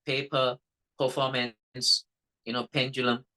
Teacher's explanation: a puff of air comes out of mouth when the letter P is pronounced correctly in English language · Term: plosive